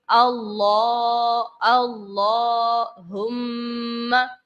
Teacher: اللہ کے لام سے پہلے زبر ہے تو ہم اس لام کو پر پڑھیں گے، موٹا پڑھیں گے